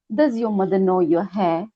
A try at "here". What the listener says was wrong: you've got to remember the difference between hair and here. Here. Yeah, that's it.